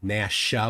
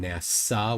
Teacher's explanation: So Nasha with an SH sound is a different word than NASA with an S sound.